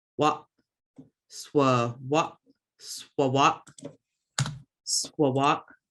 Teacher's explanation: You've got that glottal stop at the end, so it's just going to stop that word. Wop, swa, wop, swawat, swawat.